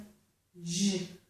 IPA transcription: dʒ